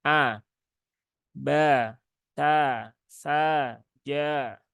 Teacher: maka ketika harakatnya fathah dibuka mulutnya ketika a ya bunyinya a bukan e bukan e bukan E tapi a a ya dibuka secara wajar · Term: membuka